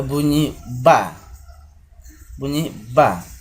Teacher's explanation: bunyi konsonan yang letak artikulasinya berada pada e dua bibir dengan cara bibir bawah merapat ke bibir atas jadi inilah yang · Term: konsonan bilabial